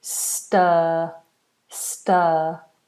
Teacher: this R is not pronounced. We do a long vowel for the end of this word. Stir, stir.